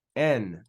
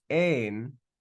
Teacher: Epsilon makes a short E sound. Eta makes a longer E sound.